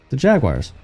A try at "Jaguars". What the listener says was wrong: They're not wires. They're not jagged wires.